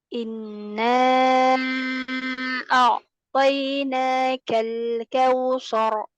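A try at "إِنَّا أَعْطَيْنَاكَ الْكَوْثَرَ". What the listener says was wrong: Nah, karena mau ditebalkan roknya, sa-nya jadi ikutan tebal. Jadi sa ini dibuka, mulutnya dibuka ya. Ketika fathah, bagaimana kemarin kaidahnya dibuka mulutnya ya. Semua huruf-huruf yang fathah ini mulutnya dibuka.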